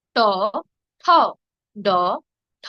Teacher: ড অল্প প্রাণ ঢো মহাপ্রাণ